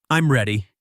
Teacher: with a falling intonation